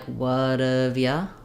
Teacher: And then we can do what have you with the true oo vowel, but sometimes we also change you to more of a ya, again with the schwa sound